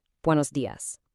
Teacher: Notice that crisp s at the end.